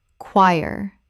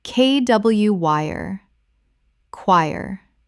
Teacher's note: 2 syllables. The CH makes a K sound, and the OI makes a Y sound.